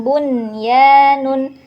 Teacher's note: Ciri-cirinya sama seperti idgham bi gunnah, tapi karena ini dalam satu kata bunyanun tidak terpisah nun sukun dan ya-nya, jadi bergandengan di satu kata. Jadi cara bacanya jelas bunya gitu ya, tanpa dengung. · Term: idhar mutlak